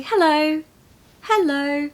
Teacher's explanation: you go high and back low it couldn't be more musical or you can say hello hello going from high to low